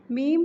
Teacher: با دونوں ہونٹوں کی تری والے حصے سے مل کر ادا ہوتا ہے۔ میم دونوں ہونٹوں کی خشکی والے حصے سے مل کر ادا ہوتا ہے